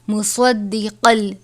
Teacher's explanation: صاد کو اور قاف کو پر پڑھیں گے کیونکہ یہ حرف مستعلیہ میں سے ہیں